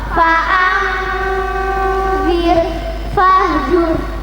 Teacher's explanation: Dan jika sebelumnya berupa fathah atau dumah, alif atau wawu sukun, maka rohnya dibaca tafkhim atau tebal dengan memoncongkan bibir